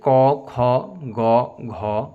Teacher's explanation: উচ্চারণে জিহবা মূল কন্ঠ স্পর্শ করে। তাই ক বর্গের ধ্বনিগুলিকে কন্ঠ ব্যঞ্জন বলা হয়।